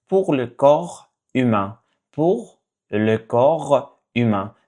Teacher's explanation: So you don't pronounce the P and S.